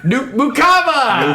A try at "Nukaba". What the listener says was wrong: Nukaba. Not an M. Nukaba.